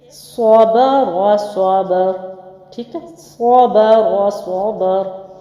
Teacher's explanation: रा पर वक्फ कर दिया तो बाकी ज़बर के साथ इसको मिला के पढ़ा, रा मोटा पढ़ा गया वक्फ में